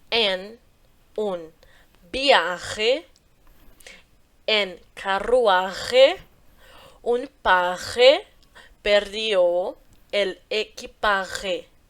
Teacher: esse J pra sair lá do fundo da garganta